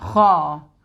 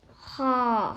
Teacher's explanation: Kha sound comes from the top of the throat here, which is nearest to the mouth.